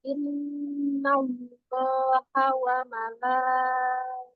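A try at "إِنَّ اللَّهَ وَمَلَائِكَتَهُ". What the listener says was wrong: Nah, ikatahu, jangan ikatu. ya, bukan ikatuhu, tapi ikatahu. Wal malaikatahu.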